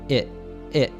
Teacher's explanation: the T in its is a glottal T. It's cut off at the back of the throat. It. So, it's, not its.